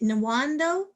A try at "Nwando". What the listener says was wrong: Wando, silent N. Silent N, so Wando.